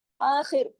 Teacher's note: آخر خا موٹا بھی پڑھا جائے گا اور خا جو ہے خراش کے ساتھ پڑھا جائے گا